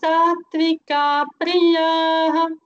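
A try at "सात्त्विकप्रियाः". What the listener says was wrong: So Satvika Priya no. Satvika priyaha. There is no elongation in ka. Satvika priyaha.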